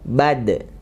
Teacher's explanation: Ketika sukun dia ada kolah atau mantul suaranya ya.